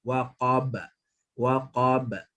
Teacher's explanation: Seolah-olah macam sebut ba, waqaba, tapi kita tak bunyikan baris. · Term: qalqalah